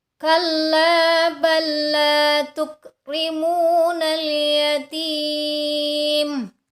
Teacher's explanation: lam yang pertama dimasukkan ke huruf lam yang kedua sambil ditekan. Kalla bal la tukrimunal yatim. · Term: lam sukun bertemu dengan huruf lam